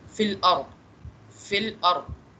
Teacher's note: इसको मतलब यहाँ पे जो है ना हमने पतला करके नहीं पढ़ना, यहाँ पे हम इसको फिल आरो रॉ को थोड़ा सा मोटा करके जो है ना अदा करेंगे